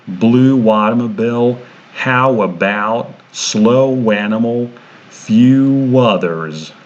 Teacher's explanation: if the first sound is oo, ow, o, or u, then we add a W sound